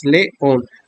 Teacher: la sílaba on es la sílaba tónica